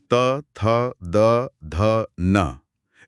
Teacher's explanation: इसमें तो साफ महसूस होता है कि जीभ दांतों को छू रही है। तो ये दंत्य हो गए।